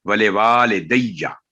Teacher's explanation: واؤ کے آگے الف ہے تو 2 سیکنڈ آواز لمبی کریں گے واؤ کی